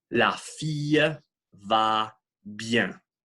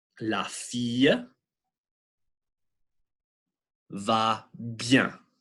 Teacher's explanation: when you say E, you can feel your tongue move to create that Y sound. You can't just keep your tongue still. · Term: semi-vowels